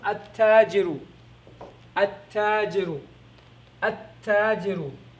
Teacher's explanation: Or you can just say the lam is not pronounced, you don't hear the lam, and the ta takes a shadda.